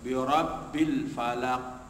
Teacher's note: apabila dia waqaf atau berbaris mati maka ada pantulan dinamakan qalqalah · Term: qalqalah sughra